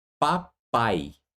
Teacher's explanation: Veja, a sílaba que mais se prolonga é a última, papai, certo? Então ali você tem uma sílaba átona, pá, e depois uma sílaba tônica, pai.